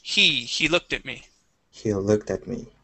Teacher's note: we can drop that h but if it's at the very beginning of a sentence we need that h there